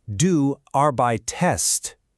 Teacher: It just slips in a little connecting vowel, an e, to break up those clunky consonants.